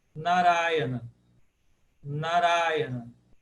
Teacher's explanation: Ura é a tônica, porque ela é a primeira longa de trás para frente.